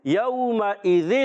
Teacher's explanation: تو یہاں پر بھی ادغام بلا غنہ ہوگا، بغیر غنے کے ادغام کریں گے، ادغام تو ہوگا مگر غنہ نہیں کریں گے